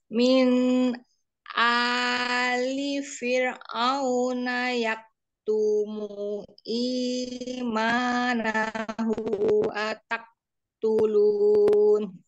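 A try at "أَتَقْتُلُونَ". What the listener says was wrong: Ya boleh. Kofa tapi kurang kol-kola ataktulun.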